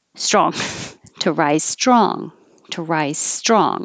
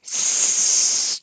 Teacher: the s is not touching because you have space for your air to come through and then it touches the top of the mouth for the t and then you hold it with a lot of pressure sure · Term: str combination